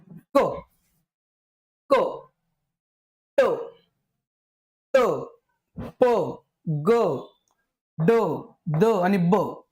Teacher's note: त्यावेळेस त्यांच वर्गीकरण डिटेल समजूया आता त्याच्या बघा स्फोटक स्पोट होणे त्यांचा उच्चार करताना हवा ज्या बाहेर फेकली जाते तोंडातून त्यावेळेस काय होते स्पोट झाल्यासारखा आवाज होण